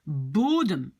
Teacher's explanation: l'accent est sur le O et pas sur le E